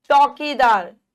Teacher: अब देखिए चौकीदार, अब चौ, औ की मात्रा, चौकीदार, बड़ा मुंह खुल रहा है।